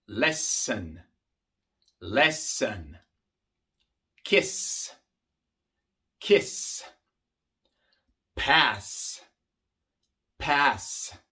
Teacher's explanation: También casi siempre se pronuncia la S de forma sorda cuando viene siendo una doble S